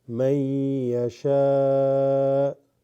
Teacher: but this noon sakina followed by ya, there is an assimilation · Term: Idgham